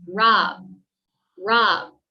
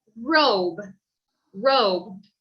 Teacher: The short O sounds more like a ah sound